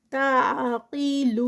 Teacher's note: تعقلون قاف ہیوی، اور لون پہ واو مدہ اور 4 counts کا اسٹریچ